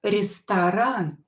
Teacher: O is not stressed, so pronounce it as A.